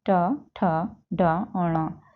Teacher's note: हिंदी की मूर्धन्य ध्वनियां हैं